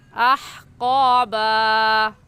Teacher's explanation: مخارج کا خیال رکھیں گے، ہا حلق کے درمیانی حصے سے نکلتی ہے، وہاں سے نکالیں گے. اور قاف حروف مستعلیہ یعنی موٹے حروف میں سے ہے تو اس کو پر یعنی موٹا کر کے پڑھیں گے